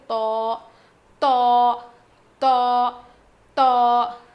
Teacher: زبان کی نوک کو سامنے کے دو دانتوں کے جڑ میں لگانے سے ادا ہوتا ہے. میں نے بتایا تھا نا کہ تا, دال اور تو کا مخرج سیم ہے.